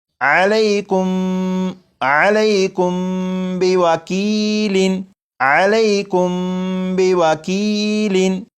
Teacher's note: تو پورے قرآن پاک میں اگر کسی بھی لفظ میں آپ دیکھیں کہ میم ساکن ہو، میم ساکن کے بعد دوسری میم ہو تو وہاں پر غنہ کر کے ہی پڑھیں گے